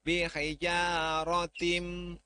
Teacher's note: Ya-nya matobi'i, rotinnya tafhim. Tinnya itu idgham biguna, ya, karena tanwin menghadapi mim, berarti harus dimasukkan ke mim.